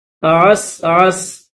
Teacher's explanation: واللیل اذا عسعس، عین کے بعد سین ہے، اس کے بعد درمیان میں پھر یہ عین ہے، پھر سین ہے، اور سین کے اوپر جزم ہے، سین کے اوپر زبر ہے، لیکن جب اسٹاپ کریں گے تو پھر سین کو جزم کے ساتھ پڑھیں گے